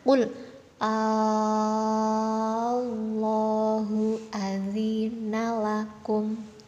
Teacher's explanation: Nah, bagian Allahnya ini dibaca panjang 6 harokat. Ini namanya mat farqi ya teman-teman.